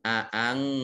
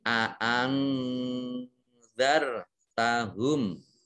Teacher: Alaihim a aangzar tahum. Nun sukun bertemu dengan huruf zal, ini dibaca samar-samar, disebut bacaan ikhfa. Ikhfa. Aangzar.